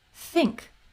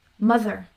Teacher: we have the voiceless th as in think and the voice th as in mother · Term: two th sounds